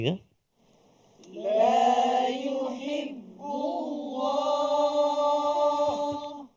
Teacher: kalimah Allah sebelum dia huruf ba yang berbaris dammah maka lafzul jalalah tu tebal